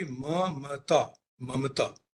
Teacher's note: आपको उच्चारण पर अगर ध्यान रखना होगा तो देखना होगा कि बीच का जो म है वह भी पूरा व्यंजन है, वह केवल कंसोनेंट नहीं है जो आने वाले त से जुड़ जाएगा